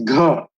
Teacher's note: where you have both voicing and aspiration